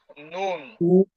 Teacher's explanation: নয় নং মাখরাজ আগা তার বরাবর উপরের তালুর সঙ্গে লাগিয়ে নুন জিহ্বার আগা তার বরাবর উপরের তালুর সঙ্গে লাগিয়ে